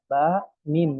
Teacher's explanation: makhraj kedua bibir itu Ba dan Min